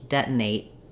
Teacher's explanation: And here with the final T, I can say it, detonate, and let the air out, or I can use another unreleased T, detonate. So I just stop that A sound very quickly, and then my T may or may not come out.